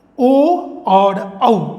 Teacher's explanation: इनका उच्चारण जो है वह उच्चारण स्थान है कंठ और ओष्ठ, यानी कंठ और होठों का प्रयोग हम करते हैं ओ और औ के उच्चारण में। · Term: कंठोष्ठई